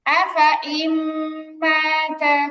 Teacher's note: যেহেতু আমরা এখানে থামাথামি করতেছি না, এই জন্য এখানে টান হবে না, ফা এর আলিফে কোনো টান হবে না